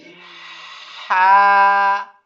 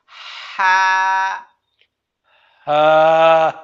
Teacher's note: 2 number মাখরাজ হলকের মধ্যখান, মধ্যখান থেকে দুইটি হরফ আসে, আইন এবং হা